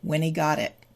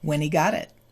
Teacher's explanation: the final T of got its surrounded by vowel sounds so it becomes a D and then it moves over when he got it okay so